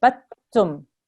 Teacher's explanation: We have to ignore this dal with the sukoon. We have to join this ba all the way to the ta, and we have to harden it because it's got a shadda on top. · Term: harden that ta